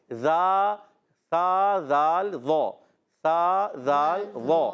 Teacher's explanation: ذال کی ادائیگی ہوتی ہے زبان کا سرا اوپر کے دانتوں کے اندرونی کنارے سے،